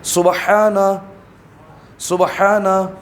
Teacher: ہا درمیان حلق سے ادا ہوگا